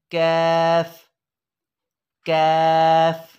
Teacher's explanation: और हम पढ़ेंगे कौफ कौफ। और कैफ ज़बान की जड़ और तालू के सख्त हिस्से से, ये करीबुल मखरज हैं, इसे हम पढ़ेंगे कैफ कैफ।